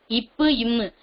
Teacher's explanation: மேலிதழும் கீழிதழும் பொருந்துவதால் பிறக்கின்றன